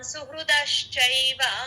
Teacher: ఋ తేలిగ్గా చెప్పాలి దశ్ అని చైవ చ కి ఐత్వం